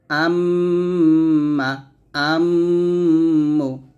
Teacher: ঠোঁট মিল করে গুণনা করতে হবে